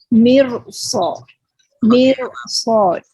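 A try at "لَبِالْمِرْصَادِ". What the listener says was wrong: Oke, jadi ada jedanya itu Bu yang harus diperbaiki ya. Bukan tebalnya. Tebalnya sudah bagus, tinggal jedanya saja.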